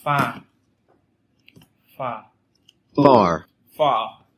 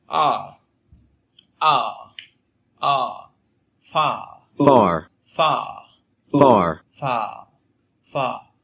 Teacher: Đấy, chúng ta sẽ thấy far, far. Đấy, bạn thấy âm a rất là rõ ràng là a, chắc chắn là a. Đấy, nhưng mà nó phải kéo dài. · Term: âm a dài